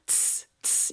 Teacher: Now, the second one we have t-s Now, this I want you to imagine you're almost like beatboxing. T-s t-s you're releasing that tuh into a longer s sound. So, it's the same position that we looked at t-t-t very, very soft up at the top here but then slowly transi- transition transition it let's just say that word into a s s s.